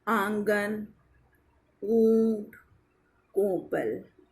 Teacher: उदाहरणतया आंगन, ऊंट, कोपल, इनमें प्रयुक्त आ, ऊ अनुनासिक है।